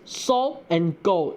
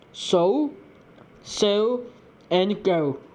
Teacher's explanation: all diphthongs where there is a lip rounding at the end is often pronounced without the lip rounding in Manglish. For instance, so and go are pronounced as so and go instead of so and go. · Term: absence of lip rounding